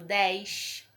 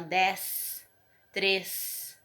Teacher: eu vou ter a tendência de falar mais com S mais chiado · as pessoas de Minas Gerais já tem esse S mais sibilante